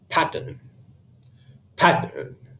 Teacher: with a first syllable emphasized pattern pattern as you can see I'm nearly shouting out the first syllable while making the second syllable almost silent